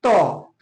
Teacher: त जैसे हम बोल रहे हैं तो हम दांत को स्पर्श कर रहा है